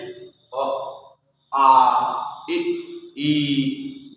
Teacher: जिन स्वरों का उच्चारण करते समय हवा केवल मुंह से उत्पन्न होती है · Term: निरनुनासिक स्वर